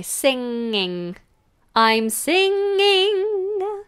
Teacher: Singing, back of the tongue high, singing.